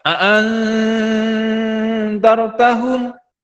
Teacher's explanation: ini ada nun sukun atau nun mati ketemu dengan dalal. Nah, ini dibaca ikhfa dibaca samar maksudnya ditahan.